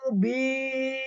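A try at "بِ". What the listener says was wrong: Bi rahang bawah diturunin. Pada harokat kasroh masih kurang. Bi. Ya, jangan sampai bi. Itu nggak boleh. Ya, bi kurang. Kurang ditarik. Tengah lidah diangkat sedikit. Bagian makhraj ya. Ya, PR-nya pada harokat kasroh masih belum. Jadi masih miring sedikit lah.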